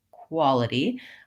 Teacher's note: for the W sound where you're not forming rounded lips so when I say quality I should really feel my lips go into the U shape